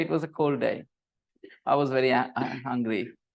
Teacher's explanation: In a normal sentence, was is not stressed. You say it was a cold day.